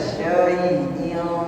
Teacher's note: Syai sama seperti syaitanir rajim. Ya, ya sukun sebelumnya fathah madlin, tidak ada penekanan, tidak ada nabrah di sana, lembut saja.